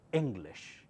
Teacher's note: Ing louder, lish softer.